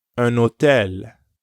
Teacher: when un is followed by a vowel sound, you do pronounce the N, like in un hôtel, a hotel. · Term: liaison